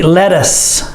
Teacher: the TT sounds like a d